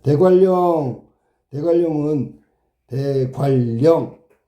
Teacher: 리을의 영향으로 니은이 리을된 거야라는 뜻이야. 좋은 방법은 비음에서 유음으로 달라졌죠.